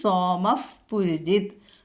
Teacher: സോമഹ പുരുജിത്ത് വരുമ്പോൾ അവിടെ ഫ വരും